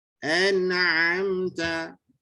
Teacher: Jadi hati-hati pada ain, sebab ain ini dia tidak tertahan seperti syiddah dan tidak terlepas seperti rakhawah